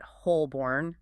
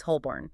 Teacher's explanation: You often barely pronounce that middle L or it just becomes completely silent. It sounds closer to Holborn.